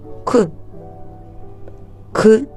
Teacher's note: він не співається і вимовляється як за допомогою язичка і зубок тобто він приголосний і позначається рисочкою у схемі слова е ескімо